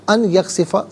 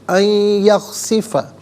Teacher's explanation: اخفا کہتے ہیں ناک میں آواز لے جا کر گنگنانا. ان یخسفہ، ان میں نون ساکن ہے، اسے یخسفہ کی یا کے ساتھ ملائیں گے، یا کی آواز کو غننے کے ساتھ ادا کریں گے